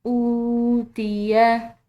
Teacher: حمزہ کے بعد جو واو آ رہی ہے یہ واو مدہ ہے، اس کو ہم نے کھنچاؤ دینا ہے 1 الف کے برابر